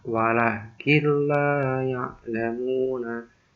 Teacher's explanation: Nah, untuk cara membacanya, jika ada bacaan nun sukun bertemu lam atau ro, maka bacaannya harus dimasukkan atau ditasdidkan dan tidak berdengung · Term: idgham bila gunnah